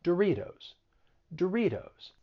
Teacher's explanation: a flap t which is very common in the united states so when the t comes between two vowel sounds you're going · flap t which is very common in the united states so when the t comes between two vowel sounds you're going to use a flat t it sounds like a soft d